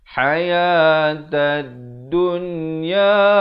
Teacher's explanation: Ta baris atas ini terus naik di atas dal yang bertanda sabdu di sini. Jadi alif lam syamsiah, lam tidak dibunyikan